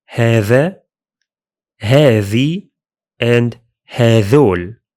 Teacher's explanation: In Gulf Arabic, the demonstratives usually keep the ذال sound, as in هذا, هذي, and هذول.